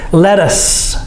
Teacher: This TT does not make the D sound. We say it with the T sound.